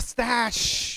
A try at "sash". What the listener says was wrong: Sash. No T.